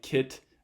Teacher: stop at the end of a word like kit versus kit is there a little puff of air after the end of that t at the end of the word kit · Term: released stop